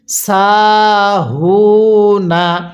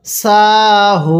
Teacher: ওয়াও পেশ হু নুন জবর না সাহু না এই যে আমরা সিনের মধ্যেও এক আলিফ টান দিব জবরের পরে খালি আলিফ থাকার কারণে হা এর মধ্যেও এক আলিফ টান দিব পেশের পরে ওয়াও সাকিন থাকার কারণে এখন যদি আমরা ওয়াকফু করি তাহলে নুনের উপর জবরকে বাদ দিয়ে